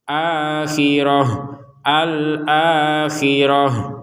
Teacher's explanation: kalau kita berhenti maka Ta ini akan dibaca sebagai huruf ha